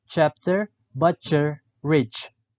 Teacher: The description of ch is voiceless palato-alveolar affricate.